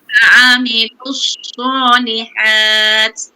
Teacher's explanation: Wa'amilus sod pertama dengan sod yang kedua, dia ada angin kan? Mengalir.